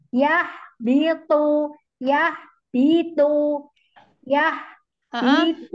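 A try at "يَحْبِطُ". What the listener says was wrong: Hak sukunnya. Hak sukunya kurang ke bawah.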